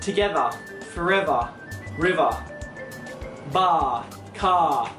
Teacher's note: in the Australian accent, we don't really pronounce R's that much